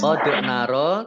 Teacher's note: dal sukun bacaan kolkolah ya, dibaca memantul, ditampakkan pantulannya.